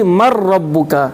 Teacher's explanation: bila kita idghamkan kepada ra tu kan tak bunyi dengung kan? Maka kita di ingat ma rupanya man ya. · mungkin kita idghamkan dia man rabbuka jadi mar rabbuka. Ha bila kita idghamkan kepada ra tu kan tak bunyi dengung kan?